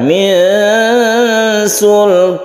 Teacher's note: Kemudian di sini ada ikhfa. Ikhfa ini kita tahan, kita dengungkan, kita panjangkan.